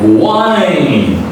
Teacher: You open your mouth more and more, and you push all your energy to pronounce this long I vowel sound